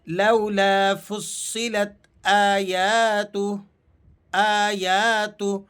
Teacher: جو ہا پر الٹا پیش کی علامت تھی اسے ہم نے ڈراپ کر دیا اور ہا کو تا سے ملا کر پڑھ رہے ہیں